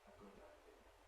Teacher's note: Idea begins with a vowel, voiced. So a good idea, voicing will normally continue throughout the whole thing. Because it's not a matter of switching it on or switching it off, it's just a matter of keeping it going.